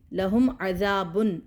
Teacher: میم کا اظہار کیا کیونکہ آگے حروف حلقی ہے ، لہم عذاب، عذاب، ذال الف مدہ اور عذاب، عذاب شدید،